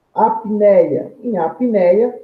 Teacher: Em apneia, olha lá, eu tenho o quê? Uma única emissão de voz, logo eu tenho um ditongo, formado por uma vogal, seguida de uma semivogal.